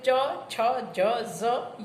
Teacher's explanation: બીજું તાલવ્ય વ્યંજન. જીભનો મધ્ય ભાગ કઠણ તાળવાને સ્પર્શે તેથી ઉત્પન્ન થતા વ્યંજનોને તાલવ્ય વ્યંજન કહેવામાં આવે છે.